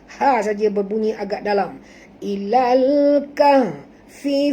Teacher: Bukan kah, tapi kah. Dalam, tapi kaf ini tak tebal, jangan tebalkan kaf. Ha saja berbunyi agak dalam. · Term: ha simpul